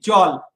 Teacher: ওকে, লক্ষ্য করো, আমরা জল বলি না, আমরা বলি জল। দ্যাট মিনস জয়ের সাথে একটা অ উচ্চারণ হয়, ল এর সাথে কিছু উচ্চারণ হয় না